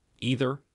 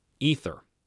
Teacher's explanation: there are in fact two different TH sounds. They differ from each other in the same way that, for example, V and F do.